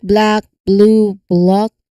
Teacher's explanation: So you are transitioning from a voiced lip sound directly to that voiced L sound. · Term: bull blend